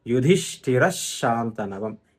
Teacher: ఈ పొల్లుష వెళ్లి తర్వాత ఉన్న ష కి ఒత్తుగా మారుతుంది . యుధిష్టిర శాంతనవం అవుతుందన్నమాట ఇది షకి సంబంధించి ఈరోజు ఇంకొక నియమం చివరిది